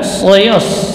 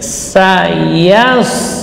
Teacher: itu ya-nya jelas, tipis, tidak boleh terpengaruh oleh huruf shad sehingga ya menjadi tebal